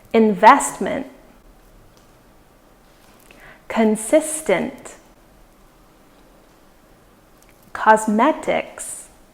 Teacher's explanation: for these ones the stress falls on the second syllable